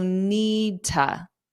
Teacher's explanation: I'm actually really dropping the D sound, but I am pronouncing that T sound